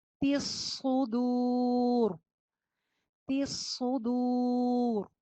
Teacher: تا کی زیر کو صاد سے جوڑیں گے، صاد موٹا پڑا جائے گا